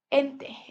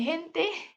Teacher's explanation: aspiración de la J, ente en lugar de gente